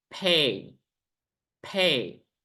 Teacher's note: you can hear I'm saying like PH. There is like H sound, like pay. But normally we say pay, pay.